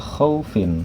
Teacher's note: di situ ada ee harakat kasratain di huruf Fa Ya maka seperti ada nun mati setelah huruf Fa dibacanya adalah khaufin seperti ada nun mati atau nun sukun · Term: tanwin, kasrotain